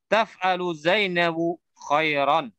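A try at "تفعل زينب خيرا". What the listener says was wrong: Sahih, taf'alu Zainabu khairan, nah.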